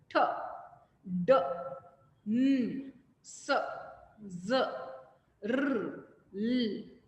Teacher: Alveolar, produced by tip or blade of the tongue and alveolar ridge or the gum